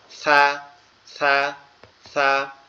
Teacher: আমাদের এই জিহ্বার আগা, এই জায়গাটা আমাদের এই সামনের এই দুই দাঁত, এটার আগার সঙ্গে লাগবে, তা হচ্ছে গোড়ার সঙ্গে লাগবে, আর সা হচ্ছে আগার সঙ্গে লাগবে